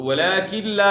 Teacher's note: یہاں ادغام بلا غنہ ہے، یعنی نون کی آواز ختم ہو گئی ہے، اس میں غننے کی آواز نہیں ہوگی، اور پھر الف مد ہے تو کھینچنا ہے 1 الف کے برابر۔